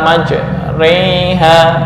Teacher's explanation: membaca fathah dengan miring ke arah kasrah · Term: imalah